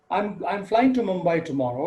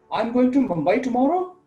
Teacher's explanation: in the first instance it's a statement because the tone is falling and in the second instance it's the yes/no question because the tone is rising